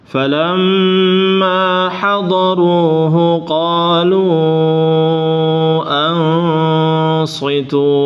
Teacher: Ini jangan kepanjangan, ma-nya dua aja.